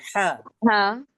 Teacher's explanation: हलक के दरमियानी हिस्से से अदा होता है। हा हा थोड़ा सा निकालने की भी कोशिश करिए।